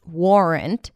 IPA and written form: ˈwɔːrənt (warrant)